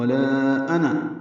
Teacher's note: آنا میں حمزہ کو اکثر حلق سے بالجہر ادا کریں گے واضح طور پر. نون کو جلدی پڑھنا ہے، نون کے بعد حالانکہ الف لکھا ہوا ہے لیکن لفظ آنا پورے قرآن کریم میں 49 مرتبہ ہے، 49 ٹائمز، اور یہ جہاں بھی ہے اس کا الف نہیں پڑھا جائے گا.